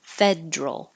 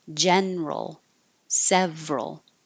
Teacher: And we talked about the word federal because it does look like it should be three syllables, federal. But this is one of the words where the middle syllable gets dropped and we make it just two, federal. Others with that same pattern, general, several.